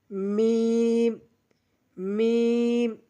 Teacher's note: মিম দুই ঠোঁট হইতে উচ্চারণ হবে